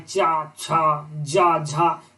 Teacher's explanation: वे व्यंजन जिसके उच्चारण में संघर्ष के साथ साथ अधिक समय लगता है वह स्पर्श संघर्षी व्यंजन कहलाता है